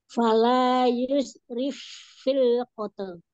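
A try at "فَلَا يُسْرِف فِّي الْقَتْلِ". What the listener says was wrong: Iya, sinnya masih belum terdengar ya.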